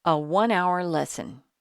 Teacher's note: Remember, the word one begins with a W sound.